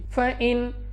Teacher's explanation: نون ساکن کے بعد حمزہ حروف حلقی میں سے ہے، اظہار کا قاعدہ ہے غنہ نہیں کرنا ، ہا اپنے مخرج سے ادا کرنا ہے، صاد مستعلیہ میں